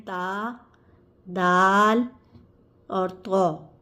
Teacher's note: ता, दाल, कौ, ये तीनों हुर्फ जो हैं वो जब ज़बान की नोक सामने वाले दो दांत ऊपर के जो दो सामने वाले दांत होते हैं उनकी जड़ से लगते हैं। जब ज़बान की नोक ऊपर वाले सामने वाले दो दांतों की जड़ से लगे तो ये हुरूफ अदा होते हैं